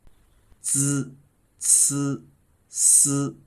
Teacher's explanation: the written vowel E is actually pronounced like the hidden vowel in the sound of Z, and the tongue is touching right behind the low teeth.